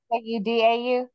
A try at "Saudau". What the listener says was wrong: Yeah, panse ki panse ta, and saudau. Sa, not saw. I think it's basic. I don't think there's that A, but I might be wrong on that.